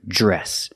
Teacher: the DR makes the j sound, plus the R